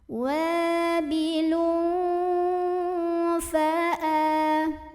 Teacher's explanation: Ada ikhfa awsat karena ada tanwin dhammah bertemu dengan huruf fa, maka bunyi tanwinnya samar-samar, mau bilang fa sambil ada dengungannya.